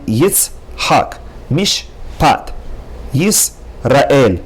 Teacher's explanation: So at the end of each syllable, you have a shva nach, a silent shva.